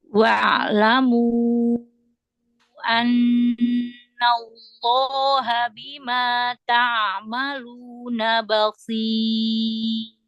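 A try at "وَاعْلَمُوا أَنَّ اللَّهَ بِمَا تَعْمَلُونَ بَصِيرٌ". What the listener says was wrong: Coba perjelas lagi lunya tersebut.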